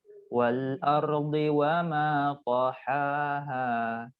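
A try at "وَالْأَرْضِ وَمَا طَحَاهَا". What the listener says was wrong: Nah, kadarnya sama yang di tengah sama yang di akhir. Jangan dikurangin ya. Wal ardi wa ma tahaha. Sama.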